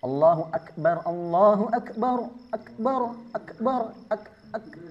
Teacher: Nah itu ada pantulan, salah. Dia nggak boleh ada pantulan karena sifatnya hamas. Tidak punya sifat qalqalah. Jadi hanya sekedar percikan saja hamesnya. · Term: huruf kaf